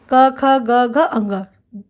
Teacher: इन सभी का उच्चारण कंठ से होता है, कंठ के स्पर्श से होता है, कंठ इसमें महत्वपूर्ण है। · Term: क वर्ग